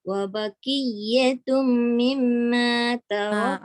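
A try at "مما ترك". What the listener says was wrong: Okey, tum betul, mim tu betul tapi dengungnya tu lama sikit.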